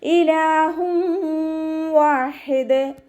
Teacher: തെൻവീനിന് ശേഷം ഇദാം ബൗന്നയുടെ അക്ഷരമായിട്ടുള്ള വാവ് വന്നു. തെൻവീനിലുള്ള നൂനിനെ വാവിലേക്ക് ലയിപ്പിച്ച് ഒന്നയോടുകൂടി ഓതാൻ ശ്രദ്ധിക്കുക കേട്ടോ